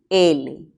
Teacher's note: este se llama sonido lateral verdad luego decimos que es alveolar y también es sonoro